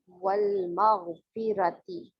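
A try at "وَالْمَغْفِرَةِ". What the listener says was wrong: نہیں, یہ آپ نے ٹائم نہیں دیا. والمغفرتی پڑھیے. اوکے, دوسری چیز یہ دیکھیں, میم م, اس کو ماغ ساری قوت آپ نے اس وقت میم اور میم کی زبر پہ لگا دیا, ماں.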